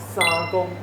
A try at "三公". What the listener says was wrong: 发 音 不 一 样 。 对 ， 你 是 讲 沙 嘛 ， 技 能 沙 嘛 ， 它 是 三 ， 对 ， 要 闭 起 来